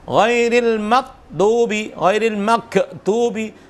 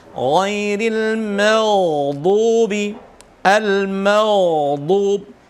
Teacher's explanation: jagalah sifat rikhwahnya huruf ghain pada lafaz al-maghdubi, sukunnya al-maghdubi, jangan sampai mengarah pada huruf lain atau mengarah pada idgham.